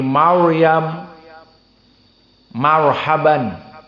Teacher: keadaannya atau sukun sebelumnya kasrah seperti mirsad mirsad Firaun Firaun namun jika ro Sakinah sebelumnya fathah maka masih mufakhamah